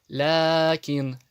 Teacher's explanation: Ля тянется, потому что после него приходит алиф, только маленький. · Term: мад